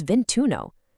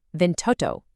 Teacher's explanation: Instead of clunkily saying ventiuno for 21, that first vowel drops entirely to make it smoother. It becomes vintuno.